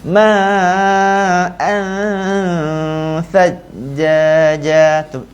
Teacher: Masa kita sebut an tu, kita keluarkan lidah kita sedikit, nanti kita akan dengar dengung huruf tha yang cantik.